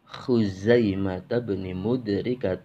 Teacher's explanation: Jadi kha ngorok sendiri, za itu mendesis sendiri.